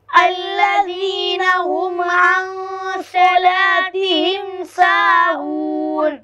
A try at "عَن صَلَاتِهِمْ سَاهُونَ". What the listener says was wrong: عن میں اخفا ہوگا اور صلا میں سواد پور پڑھیں گے آپ سین پڑھ رہے ہیں